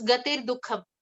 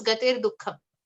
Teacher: So when you combine gati and dukham, there is a slight there is an r sound that has to be inserted in between to be able to combine those two words according to the rules of Sanskrit grammar.